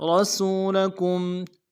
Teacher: مقدار میں کھینچیں گے، لام کو نرم سے ادا کریں گے، کاف کو میم ساکن کے ساتھ ملانا ہے، میم ساکن میں غنہ کریں گے · را کو موٹا ادا کرنا ہے، سین کی سیٹی باریک ہوگی ، سین کو واو کے ساتھ ملانا ہے، واو مدہ ایک